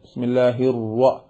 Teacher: ചുണ്ടുകൾ ഉപയോഗിക്കുമ്പോൾ റാഇ ന്റെ ശബ്ദത്തിൽ വാവ് കൂടി കൂടും